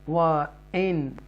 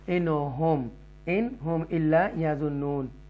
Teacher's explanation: نون ساکنہ کے بعد ہاں ہے، اور یہ حروف حلقیہ میں سے، تھروٹل لیٹر میں سے ہے، لہذا نون کو کلیئر پڑھیں گے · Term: اظہار